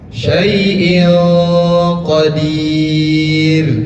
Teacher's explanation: Hamzah memiliki harkat kasrohtain, tanwin bertemu dengan qaf, maka dibaca samar. Bukan syai'in qadir, bukan syai'in qadir, tetapi ditahan. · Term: ikhfa